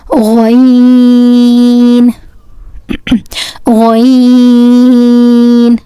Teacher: This Ghain from the throat nearest to the mouth